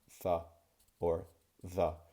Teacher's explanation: the tip of my tongue is protruding from in between my teeth just a slight bit. So when I say th or the, you can see how my tongue comes out and I go th or the.